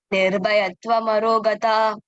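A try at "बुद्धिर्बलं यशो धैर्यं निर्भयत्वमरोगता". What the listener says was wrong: Pay attention to which ba. You're saying ba, all of them.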